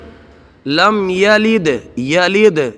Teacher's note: لم یلد، یلد یہ دال میں قلقلہ ہے